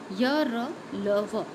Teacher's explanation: आप बोल कर देखें, आपको गले के भीतरी भाग से उच्चारण होगा इन चारों व्यंजनों का। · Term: अंतस्थ व्यंजन